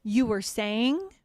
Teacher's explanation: my tone of voice is going to be a little bit trailing off there to help them pick up the conversation